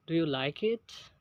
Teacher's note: there is the rise of voice when you ask a question